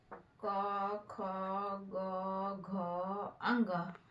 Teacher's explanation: उच्चारण कंठ के स्पर्श से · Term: क वर्ग